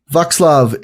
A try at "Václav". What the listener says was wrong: No, it's Václav. There is no K.